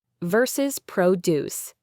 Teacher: Stress on the second syllable, verb, to create or make.